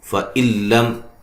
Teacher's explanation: نون ساکن کا ادغام ہے بلا غنہ، غنہ نہیں کریں گے ، لم میم ساکن کا اظہار ہے، غنہ نہیں کریں گے،